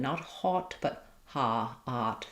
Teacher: Think of just like the doctor says say ah, your tongue is down and flat and your lips aren't rounded